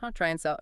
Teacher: You said it's common, but how does the and sound when smushed in like that? It often gets reduced right down to just an N sound attached to the try.